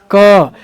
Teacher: कंठ से अगर उच्चारण करेंगे तो कंठ जीभ का भाग कहां जाएगा पीछे खींचा आएगा क यानी जो जीभ है ना कहीं टच नहीं करेगा किसी · जो जीभ है ना कहीं टच नहीं करेगा, किसी भी स्वर तंत्र में टच नहीं करेगा, बल्कि जीभ पीछे ठीक यहाँ पीछे खींच आएगी, जीभ पीछे खींची जाएगी, ठीक है।